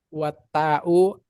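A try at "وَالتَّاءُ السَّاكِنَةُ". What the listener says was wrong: Jangan dipotong lah, coba belajar baca di wasol. Wa ta'u sakinatu. Perhatikan ini bukan, ini nggak boleh dibaca karena hamzah wasol.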